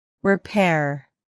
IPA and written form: rɪˈpɛr (repair)